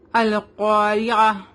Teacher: قاف heavy letter ہے, اس کو ہیوی پڑھیں گے. را کے نیچے زیر ہے, اس لیے را کو ہم لائٹ پڑھیں گے